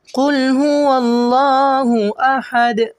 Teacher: احد کے آخر میں دال ہے، اسے قلقلہ کریں گے۔